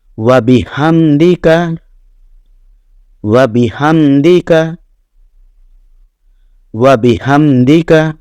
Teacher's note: ایک تو یہ ہا، یہ عام جو ہا ہم بولتے ہیں اس کا اور جیم ہا والے ہا کا فرق ہوتا ہے۔ یہ وسط حلق سے ہا یہ آواز نکلتی ہے